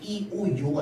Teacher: 요를 발음하기 위해서 5를 먼저 발음하고이를 발음하면 요가 안 됩니다. 요를 발음하기 위해선 이오를 발음해야지 이오 요가 되는 거거든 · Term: 상향식 이중모음